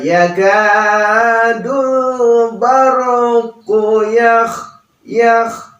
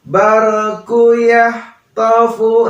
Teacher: Tetapi kha ya, dia ada di kerongkongan